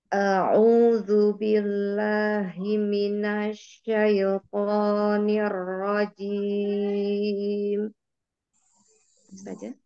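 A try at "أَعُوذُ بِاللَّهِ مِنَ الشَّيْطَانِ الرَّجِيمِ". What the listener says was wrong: Ya, alhamdulillah haknya sudah dari hi minash. Di situ jangan dikasih jeda ya. Tidak hi minash, langsung hi minasyaitonir rajim.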